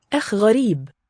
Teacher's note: It's a very bright ash quality before the velar.